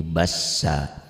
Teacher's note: mad iwad, dua fathah dibaca satu jika dihentikan